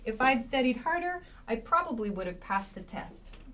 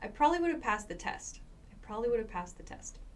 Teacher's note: this probably reduces to prolly prolly is what it sounds like we do not spell it prolly but it sounds like that